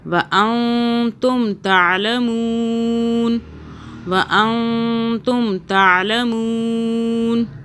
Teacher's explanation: نون کو چھپا کے پڑھیں گے، زبان تالو سے ٹچ نہ ہو. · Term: اخفا